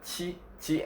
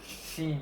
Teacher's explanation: the tip of our tongue doesn't touch the palate and doesn't touch the front teeth well the upper front teeth